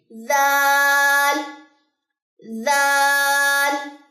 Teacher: بہت نرم ادا کرنا، اس کو کبھی بھی اس میں سیٹی کی آواز نہیں آنی چاہیے، زال زال نہیں، ذا ذا۔ اوپر والے جو دو دانت ہیں ان کو جو ہے وہ زبان کی نوک لگے گی